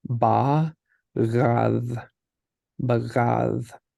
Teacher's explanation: the first one is a plosive and the other two are fricatives